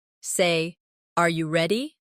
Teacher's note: Say, Are you ready? with a rising tone.